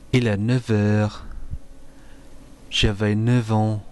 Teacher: you sound the F as a V before the words un and heure. Use an F sound before other words.